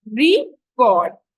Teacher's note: the stress is on the first syllable when it is a noun record and on the second syllable when it's a verb so